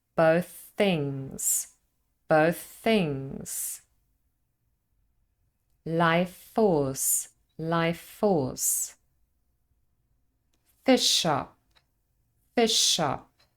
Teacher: In all of the examples, the middle consonant can be slightly longer because of gemination.